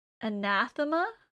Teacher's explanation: the stress is on the second a